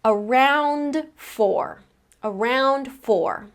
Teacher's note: I actually don't need to pronounce that final D at the end of around now, because since I've connected it to the next word, I actually have 3 consonant sounds in a row.